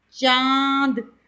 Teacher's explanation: अनुनासिक इस वर्ण का उच्चारण नाक और गले दोनों से होता है